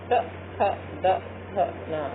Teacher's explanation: उसके बाद है दंत से बोले जाने वाले ट, थ, द, थ, न। आप देखिए बोल के तो हमेशा दांत स्पर्श होते हैं, तो इनको दंत वर्ण कहते हैं।